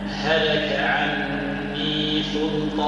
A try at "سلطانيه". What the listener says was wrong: سلطا نقول صل تولي بالصاد هي بالسين سلطانيه